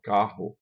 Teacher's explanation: A gente aqui no Nordeste não pronuncia isso como vibrante múltipla, mas a gente pronuncia isso como aspiração